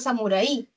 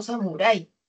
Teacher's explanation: la mayor fuerza de voz está en la A, es un diptongo, no lo puedo separar si no formaría un hiato acentual.